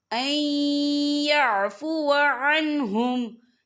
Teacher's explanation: یہاں پر ادغام ہوگا. تو ہم اسے تھوڑا سا غنّے کے ساتھ پڑھیں گے